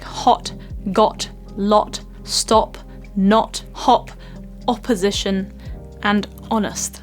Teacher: it's very short and very round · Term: Short Round o sound